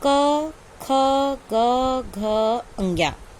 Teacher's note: का वर्ग का उच्चारण स्थान क्या है, कंठ है।